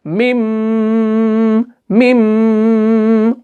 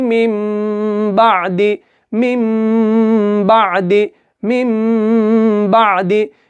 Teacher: मिम को जो आप खींच रहे हो ना, वो आपको नाक में गुन्ना करना है 2 से 3 सेकंड तक का, हार्डली 2 सेकंड का आप इसमें गुन्ना करें।